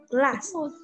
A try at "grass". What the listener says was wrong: đúng rồi, grass. Grass đúng không? Cốc là glass nhưng cỏ là grass, ok?